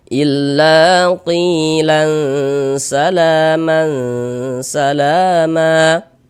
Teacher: maka huruf yang memiliki harakat kasrah tersebut dibaca panjang sehingganya qi kita baca panjang